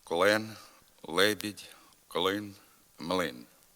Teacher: звук л перед е та и вимовляється дуже твердо при його вимові язикове тіло сильно зосереджується в задній частині ротової порожнини піднімаючись трохи до м'якого піднебіння клен Лебідь клин млин така дуже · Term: дуже тверда вимова л